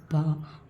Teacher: பா அப்படின்னு சொல்லும்போது ரெண்டு உதடு ஒட்டி பிறக்குது